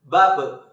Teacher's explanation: ketika huruf ba dalam posisi mati suaranya terdengar mantul